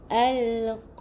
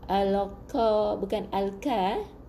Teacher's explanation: qa tebal, ra baris bawah nipis. Bukan al-qa, bukan al-ka.